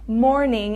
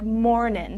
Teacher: So sometimes in songs or even in written English, you can take off the last letter of a word and replace it with this apostrophe here. So instead of saying morning, it's pronounced a little bit more like mornin'. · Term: southern accent